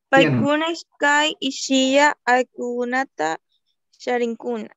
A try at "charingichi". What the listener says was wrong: Sí, en las últimas partes más como decir la G como en vez de la K, ahí charingichi, charingichi, charini, charingi, charin, charingichi, charingichi, charinguna, sí, eso nomás.